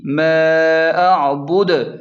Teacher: دال کو تھوڑا سا ہلائیں یعنی جھٹکا دے کر پڑھیں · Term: قلقلہ